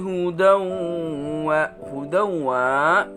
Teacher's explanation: fathatain bertemu dengan waw, hukum bacaannya idgham bi gunnah dengan dengung